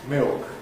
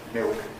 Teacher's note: the new habit of vocalizing the L beginning to come in may mean that this ceases to be a consonant cluster and gives us instead a new diphthong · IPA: [mɪok]